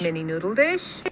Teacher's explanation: You can definitely hear the rise at the tail end for dish.